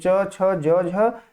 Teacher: च वर्ग की ध्वनियों का जो उच्चारण स्थान है वो तालु है। इसीलिए इसको तालव्य ध्वनि कहते हैं।